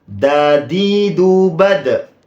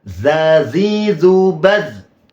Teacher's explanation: kalau dal itu syiddah, jelas. Sedangkan zal itu memiliki sifat rikhwah atau rokhawah, mengalir lembut.